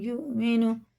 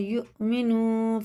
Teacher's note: حمزہ میں جھٹکا ہوتا ہے